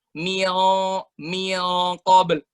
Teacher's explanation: kita taruh dengungnya dalam leher di posisi di mana qaf itu terbentuk. Min qabl. Jadi rasanya tuh di tempat di mana kita biasa pengen ngeluarin dahak tuh, dengungnya di situ.